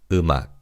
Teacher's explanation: the bachim in the first syllable carries over to the second syllable. So this word is pronounced as umach.